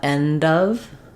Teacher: Of has the schwa and the v sounds. So often people mispronounce this word because they think it has an O or an A or a f sound.